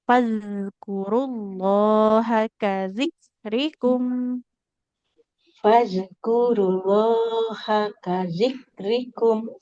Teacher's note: huruf zal sukun nggak boleh fadkurullah, harus mengalir suaranya. Ujung lidahnya nempel ke ujung gigi seri yang Ya, atas.